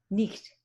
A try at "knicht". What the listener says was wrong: With a k. Knicht.